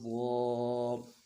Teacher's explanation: زبان کا بیچ اٹھانا ہے موٹا کرنے کے لیے۔